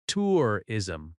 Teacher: Tourism has stress on the first syllable.